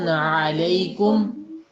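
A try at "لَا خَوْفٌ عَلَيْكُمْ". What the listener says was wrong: کم، کم تو ویسے رہے گا، آئین جو تھا اس کو آپ نے الف اور آئین جو تھا مکس کر دیا تھا۔ ایک دفعہ پھر پورا پڑھ لیجئے۔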